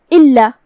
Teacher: ان الانسان لفی خسر الا الذین آمنوا وعملوا الصالحات وتواصوا بالحق وتواصوا بالصبر. الا، یہاں لام پہ تشدید ہے، ہمیں 2 حرف کے برابر لام کو ادا کرنا ہے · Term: لام کی تشدید